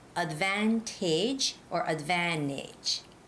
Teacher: Because there's no stress on the last A. So you have to say advantage or advantage, okay? That last A should sound more like an I.